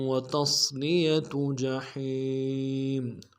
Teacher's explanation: سے ادا کریں گے تا کو صاد کے ساتھ ملانا ہے صاد کو موٹا ادا کریں گے صاد کی سیٹی موٹی ہوگی لام کو نرم سے ادا کریں گے یا کو نرم سے